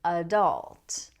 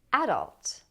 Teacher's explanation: this has stress on the second syllable, so the first syllable is reduced to a schwa sound